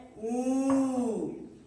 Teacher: छोटा ऊ से बड़ा ऊ में ज्यादा समय लगा, 2 मात्रा का समय लगा